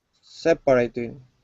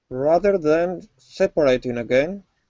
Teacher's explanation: the word is pronounced separating. The stress is at the very beginning.